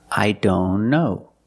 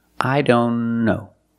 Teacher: If you link the sounds, I don't know. Link the N with the other N.